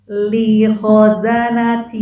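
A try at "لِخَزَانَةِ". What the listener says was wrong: Linya kepanjangan. Kenapa barusan kepanjangan? Ibu barusan mikir dulu. Li, jadi kepanjangan. Li, nanti kalau seperti itu kasusnya, coba ibu ejah dulu satu-satu. Li, terus gabung.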